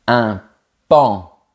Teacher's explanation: Attention, fais comme si la lettre O n'existait pas. Je répète. Un paon.